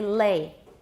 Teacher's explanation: Say the l at the beginning of lay, and you'll hear it's definitely voiced.